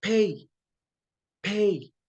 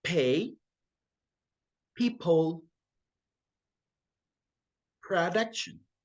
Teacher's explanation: It feels like you have a little H right after the P. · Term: aspirated